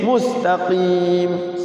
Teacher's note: Beda dengan mus, tidak mus, ya kan? Mus tipis, mustaqim. Sin itu ngalir.